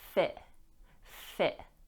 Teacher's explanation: We can pronounce the T, but it's often glottalized